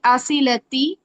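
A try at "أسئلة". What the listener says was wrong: अस इला, अस इला, इसको लंबा नहीं करना। अस, अस इलती, तिल कहना है। अस इलतिल असइला। असइलतुन।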